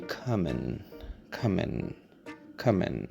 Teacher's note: when it is in an unstressed position, the letter I, I mean, you can very simply change it into a schwa